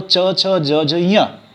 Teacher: तो च छ ज झ य आपका तालु स्थान हो गया